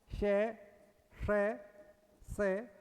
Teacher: ये उष्मीय व्यंजन है तालव्य मुर्धन्य और दंते · यह तो तालव्य से है यह मुर्धन्य से है यह दंत से है